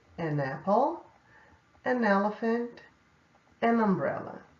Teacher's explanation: quando você usa o an, você acaba emendando o N com a vogal que vem logo depois